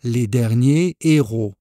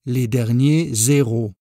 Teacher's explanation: il commence par un h aspiré ce qui signifie on ne doit pas faire la liaison avec l'article ou l'adjectif ici donc les derniers héros sans liaison pour éviter la confusion